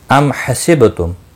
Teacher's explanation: میم ساکن کے بعد ہا آیا ہے، اظہار شفوی ہوگا، با ساکن پر قلقلہ ہوگا۔